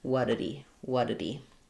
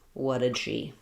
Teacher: we lose that h and it just sounds like what did he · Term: that H drops